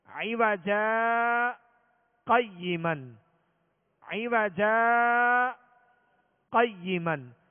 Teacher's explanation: جیم پر جو دو زبر کی تنوین ہے اس کو الف سے بدل کر آواز روک کر اسی سانس میں آگے پڑھیں گے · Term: سکتہ